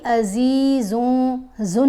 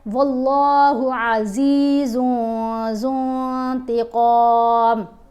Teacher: دونوں جگہوں پر ہم نے اخفا کیا، نون کو واضح نہیں پڑھا